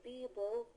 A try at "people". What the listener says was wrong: When you pronounce that P, you have to pronounce it with a lot more air. People. People.